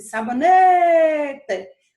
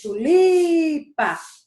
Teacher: foi a penúltima sílaba que eu falei e ela é a sílaba mais forte que a gente chama de sílaba tônica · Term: paroxítona